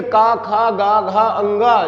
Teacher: ठीक है, का, खा, गा, घा, अंगा, जब हम इन वर्णों को उच्चरित करते हैं अर्थात का वर्ग को जब हम उच्चरित करते हैं, आप देखिएगा, बोलिएगा क, तो देखिएगा प्रेशर कहाँ से पड़ता है, कंठ के द्वारा इन वर्णों को उच्चरित किया जाता है, इसीलिए इनको कंठ व्यंजन कहा जाता है।